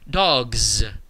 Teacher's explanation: you get the word dogs with a very very distinct z at the end